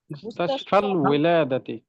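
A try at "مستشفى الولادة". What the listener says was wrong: মাবনি শব্দ তো জের হবে না। মুস্তাশফাল ইলাদাতি।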